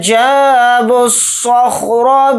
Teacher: پڑھا جائے گا، ڈائریکٹ با کو سواد کے ساتھ ملائیں گے، سواد کو یہاں پر موٹا یعنی پر پڑھیں گے ، سواد کو خا ساکن کے ساتھ ملا کر پڑھیں گے،